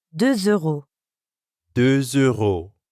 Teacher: De is actually spelled with a silent letter X at the end. But when we add a vowel sound after it, like in euro, we end up with a liaison that has a Z sound